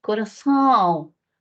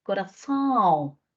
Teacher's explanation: el aire sale en mayor proporción por la nariz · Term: nasalizada